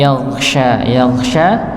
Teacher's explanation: jadi dia posisi Shin itu di pertengahan lidah bukan dihembuskan ke depan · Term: tafasi